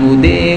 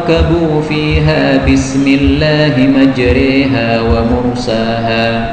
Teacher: Bacaan imalah namanya, ya. Imalah itu fathah yang dicampur dengan ya, lebih banyak ya-nya